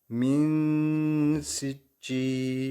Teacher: Yani burada cezimli nundan sonra sin harfi gelmiş burada. Sin harfi de ihfa harflerimizden sesi 1,5 elif genzimizde tutuyoruz.